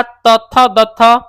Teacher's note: दंत दंत से आपका तथ दथ पढ़ा जाता है